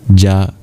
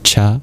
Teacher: Ja is just a voiced version of cha. Cha is just a voiceless version of ja.